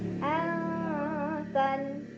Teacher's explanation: Cara bacanya nun sukun disamarkan ke ta sambil dengung. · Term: ikhfa aqrab